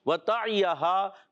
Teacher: وَتَعِیَہَا، حرکات کو بغیر کھینچے ادا کریں گے، عین حلق کے درمیان والے حصے سے، ہا علی مدہ ہے، اس کے بعد حمزہ دوسرے کلمے میں آ رہے ہیں، ہو جائے گا مد منفصل۔